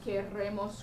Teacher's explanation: with a double trilled R there